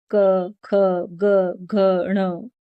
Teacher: जैसे हमने आगे वर्गीय और स्पर्श वर्ण में पढ़ा था क वर्ग। इस वर्ग समूह के सारे वर्ण गले की मदद से बोले जाते हैं। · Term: कंठ